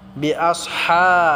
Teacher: হাটা আমরা গলায় চাপ দিয়ে এক আলিফ টেনে পড়ব।